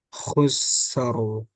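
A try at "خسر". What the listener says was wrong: Ya, itu kalau temponya lambat kayak gitu. Jadi tadi kayaknya sedang ya. Jangan terlalu lama.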